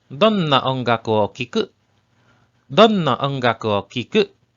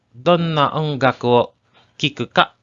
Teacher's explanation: In casual conversations, you drop the question particle ka and use the rising intonation to ask a question.